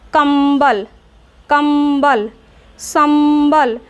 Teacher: जैसे कंबल, उच्चारण करके देखिए, कंबल, कंबल, संबल, तो मुख बंद करके नाक से अधिक सांस ली जा रही है, अर्थात इसका उच्चारण नाक से होता है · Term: अनुस्वार